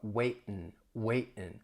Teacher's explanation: If I drop the G, it's going to change to a glottal stop. It's like I'm swallowing the T. The sound is coming from the throat.